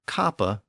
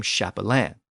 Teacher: And the priest who cared for Martin's cloak was called a capellanu, and ultimately all priests who served the military were called capellani. In later French, the initial consonant shifted from a K sound to a CH sound, and in French the word became chapelain.